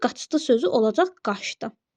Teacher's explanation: Bir də ç-dan sonra əgər d, z, s, t, l, n bunlar gələrsə, ç, ş kimi tələffüz olunacaq. Məsəl üçün, qaçdı sözü olacaq qaçdı.